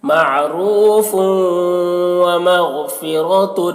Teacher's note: معروف ومغفرۃ، یہاں پر غین کو پر پڑھیں گے کیونکہ غین بھی حروف مستعلیہ میں سے ہے